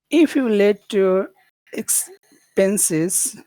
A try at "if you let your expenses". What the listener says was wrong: but we're going a little bit high. We should, if we want to go low, let's go low.